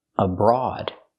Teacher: The first syllable is not stressed, so we use a schwa